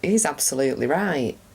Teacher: He's /rai'/ right, see, final T disappeared.